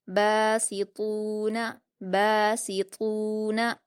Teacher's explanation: با پر الف مدہ ہے، 2 حرکات کھینچیں گے۔ سین پر حرکتیں جلدی پڑھیں گے۔